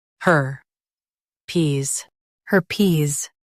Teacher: Stress her and keep pes clear.